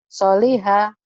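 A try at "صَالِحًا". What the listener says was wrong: Solihah panjang Bu. Soalnya panjang. Solihah yang ini. Solihan yang ini.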